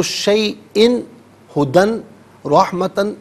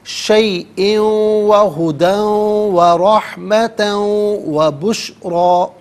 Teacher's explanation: واو کی آواز کو تینوں جگہوں میں، تینوں مقامات میں غنّے کے ساتھ ادا کریں گے